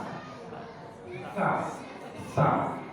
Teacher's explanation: Sa itu di ujung lidah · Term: huruf sa